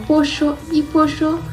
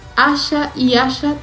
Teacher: palabras como pollo y pollo se pronuncian igual, con un solo sonido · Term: yeísmo